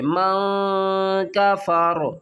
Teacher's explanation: من آمن ومنہم من کفر، ومنہم من کفر، اس کو ہم نے من نہیں پڑھنا، سختی نہیں کرنی، میم نون زبر من، آگے تنوین نون ساکن کے بعد حروف اخفا میں سے آ رہا ہے فا، تو ہم کیا کریں گے؟ اس کی آواز کو چھپا کر پڑھیں گے